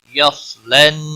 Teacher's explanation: صاد حروف مستعلیہ میں سے ہے، موٹا پڑا جائے گا. لن، نون مشدد پر غنہ ہوگا.